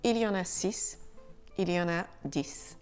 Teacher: Le X de 6 et 10 se prononce SE quand il n'est suivi de rien.